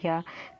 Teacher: जो मुख के जो अंग होते हैं वो बिल्कुल ना के बराबर स्पर्श करते हैं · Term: अर्ध स्वर